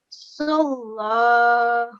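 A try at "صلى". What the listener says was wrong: Now this lam is not a thick lam, okay? So don't make it thick.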